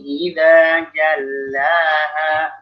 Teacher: lam itu juga salah satu huruf yang rentan tebal. Jalla. Dia lebih ditipiskan lagi. Wan nahari idza jallaha, jangan jallaha.